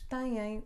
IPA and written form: tɐ̃j̃ɐ̃j̃ (têm)